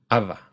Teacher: It's made by bringing both of your lips close together, but instead of closing them completely to form a B, abba, you let a little bit of air through and make V, ava.